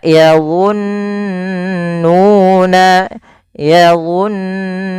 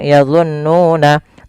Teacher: Di sini ada bacaan gunah, yaitu apabila ada nun berharakat tasydid atau mim berharakat tasydid, itu kita namakan dengan bacaan ghunah. Cara membacanya yaitu menahan suara nunnya sepanjang dua harakat.